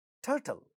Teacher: ta in the stressed syllable, also because it is at the word initial position, gets aspirated, but ta at the other syllable which is not stressed is not getting aspirated.